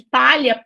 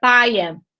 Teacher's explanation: esses falantes acabaram substituindo esse L esse L né o LH pelo I